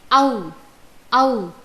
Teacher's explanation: औ वर्णस्य उच्चारणे अपि कण्ठ ओष्ठौ एव अधिकौ सक्रियौ भवतः। अतः औ वर्णस्य उच्चारणस्थानं कण्ठ ओष्ठौ स्तः।